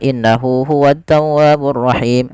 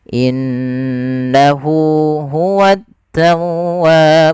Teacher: pada lafal Nun berharakat tasdid ada bacaan gunah yang di mana suara nunnya wajib kita tahan kesalahan terjadi tidak menahannya contoh innahu hu tawwaburahim harusnya innahu huwaburahim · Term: gunnah